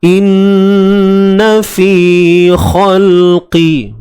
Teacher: fi 2 harakat, mad asli. Di sini ada ya mad dan sebelumnya berbaris bawah.